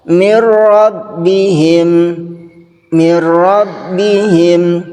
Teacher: adalah nun sukun atau tanwin bertemu dengan huruf lam atau ro cara membacanya yaitu meleburkan nun sukun ke huruf berikutnya tanpa gunah · meleburkan nun sukun ke huruf berikutnya tanpa gunnah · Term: idgham bila gunah, idgham bila gunnah